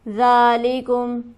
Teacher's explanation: ذال پر ہمارے پاس کھڑی حرکت موجود ہے، اسے ہم کھینچیں گے ایک الف کے برابر